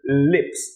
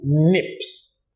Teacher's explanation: If you're watching me, you will not mistake that for nips, because you would see that when I pronounce the word lips, my tongue went to the roof of my mouth and I went lips as opposed to nips that had a much more nasal sound in it